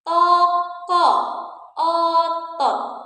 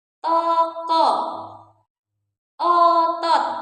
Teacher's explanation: O madya bawah belakang